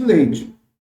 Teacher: Primeiro uma vogal, depois uma semivogal. · Você tem a vogal e depois a semivogal I. A semivogal sempre vai ter o som de I ou de U. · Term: decrescente